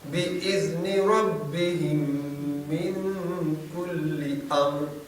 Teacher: اب یہاں ربہم کو من کے ساتھ ملائیں گے تو 2 میم اکٹھی ہونے سے غنہ ہوگا.